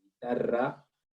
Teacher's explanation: la lengua vibra por sobre el paladar. Ra. · Tenemos sonidos vibrantes que se forman con la lengua en el paladar vibrante, como la R, que es vibrante suave, y la doble R, que es vibrante fuerte, ¿no? Guitarra, ustedes se dan cuenta, la lengua vibra por sobre el paladar.